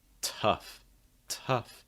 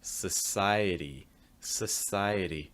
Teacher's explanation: the t becomes more like a d sound that's pronounced very quickly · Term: flap d